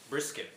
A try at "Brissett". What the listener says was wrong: I don't think there's a C in that.